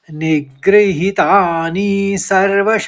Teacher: नी ह्रस्व होगा और ही दीर्घ होगा और नी फिर ह्रस्व होगा और सर्वश में ह करके आप उच्चारण करेंगे निग्रहितानी सर्वशः तीसरे चरण में एक ही शब्द है।